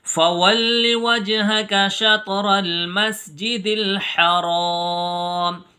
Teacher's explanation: را پر ہوگا یعنی موٹی آواز میں پڑھیں گے کیونکہ را کے اوپر زبر ہے . اگر را کے نیچے زیر ہوتا تو پھر را باریک